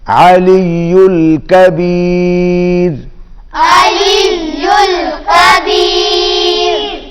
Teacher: रा बारीक और काफ भी बारीक होगा.